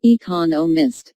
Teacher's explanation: there are four syllables in economists with the stress on the second syllable